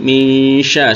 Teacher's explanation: Kalau yang di riwayat kita nunnya disamarkan ke shinnya, jadi makhraj antara makhraj nun dan makhraj shin